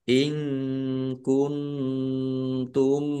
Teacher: Nun sukun bertemu dengan huruf ta juga ikhfa dibaca samar-samar.